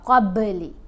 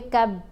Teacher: با ساکن ہے تو یہ حروف کلکلا میں شامل ہے، با کی آواز کو ہلا کر پڑھا جائے گا، قبلی۔ اگر ہم پڑھتے ہیں نا قب، قاف کو با سے ملاتے ہوئے کب، قب، تو کلکلا ادا نہیں ہو رہا، قب پڑھیں گے تو کلکلا ادا ہوگا۔